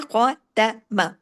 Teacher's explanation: خواہ ہیوی باقی باریک ہے